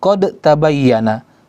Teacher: Ya, qad bukan dibaca qad bukan dibaca qad tabayyana, tapi dibaca qad tabayyana. Seakan-akan huruf dal di situ tidak ada dan seakan-akan yang ada huruf ta bertasydid. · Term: idgham